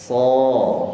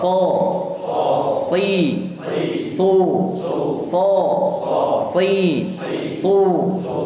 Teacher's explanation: Sudah kita dapatkan makhraj dan sifatnya. Sehingga ketika mengucapkan huruf shad, ya, didorong, kemudian keluarkan nafasnya dan disertai dengan desisan. Kemudian diangkat pangkal lisan, ya, menjadi so.